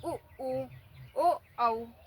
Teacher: आप खुद भी बोल के देख सकते हैं कि इनको बोलने में हमारे ओठ गोल हो जाते हैं। उ ओ औ, तो खुद ही ओठ गोल हो जाते हैं। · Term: व्रतमुखी